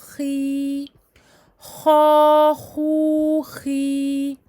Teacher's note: elle est emphatique, donc on essaie de remplir la bouche à l'intérieur avec l'air.